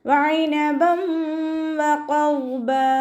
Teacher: ഖാഫ് ഇസ്തിഅലാൻ്റെ ലെറ്ററാണ്, തഫ്ഹീം ചെയ്യുക. · തെൻവീനിന് ശേഷം ഇദ്ആം ബിഉന്നയുടെ അക്ഷരമായിട്ടുള്ള വാവ് വന്നു. തെൻവീനിനെ വാവിലേക്ക് ലയിപ്പിച്ച് ഉന്നയോടുകൂടി ഓതി കൊടുക്കുക